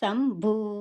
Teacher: బాకు కొమ్ము దీర్ఘం ఉంది. గాలిని బయటికి వదులుతూ భూ అనేసని పలకాలి. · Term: మహాప్రాణ అక్షరము